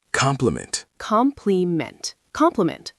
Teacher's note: COM-pli-ment, Compliment. Stress on the first syllable.